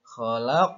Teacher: maka dibacanya harus memantul tapi tipis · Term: Qolqolah Sugro